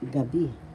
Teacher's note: So the second syllable has the accent